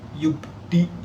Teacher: Huruf ba di sini berharokat sukun asli di tengah lafal sehingga dibaca dengan pantulan sedang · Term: qalqalah sugro